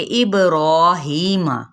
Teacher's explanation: ابراہیم، اب یہاں پہ با پہ پراپر قلقلہ، یعنی اس با کے لیٹر کو یعنی حرف کو ہلانا ہے